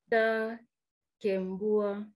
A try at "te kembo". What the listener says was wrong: Ah, c'est pas ta, c'est te. Te kembo. Tout le monde dit te kembo.